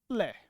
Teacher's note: तरफ से बाहर निकलती है बाहर बाहर निकलती है दोनों तरफ से हवा बाहर निकलती है इसलिए क्या कहा जाता है क्या कहा जाता है पार्श्विक व्यंजन · जब भी हम लय का उच्चारण करते हैं तो हवा है वो दोनों तरफ से बाहर निकलती है।